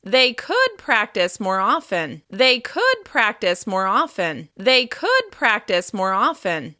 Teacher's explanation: By stressing could, it feels more like an option than a requirement. You're offering a useful suggestion to help solve a problem. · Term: focus word